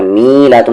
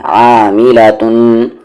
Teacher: मी और ला को बिल्कुल नहीं खींचना है